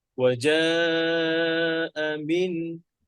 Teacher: হামজার আওয়াজটা একটু নিচু রাখবেন, মিনের আওয়াজটা উঁচু করবেন।